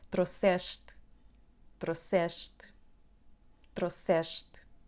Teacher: A letra S tem o som sh, porque temos uma vogal antes, temos a letra S e depois mais uma consoante que é T.